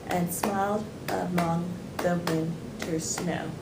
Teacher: this incorporates what is called I ambic transmitter which means that there are four sets of syllables each alternating between unstressed and stress